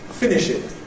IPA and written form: ˈfɪnɪʃɪd (finished)